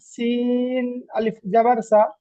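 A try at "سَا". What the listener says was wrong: সা, সাটা এক আলিফ। হ্যাঁ, সিন আলিফ জাবার সা, একটু টান করতে হবে।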